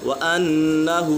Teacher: نون مشدد ہے، نون مشدد میں ہمیشہ غنہ ہوتا ہے